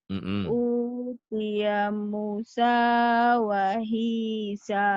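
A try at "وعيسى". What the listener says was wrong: Wahisa bukan wahisa, itu ain, bukan ha. Pokoknya panjang. Panjang. Mu panjang. Sa panjang.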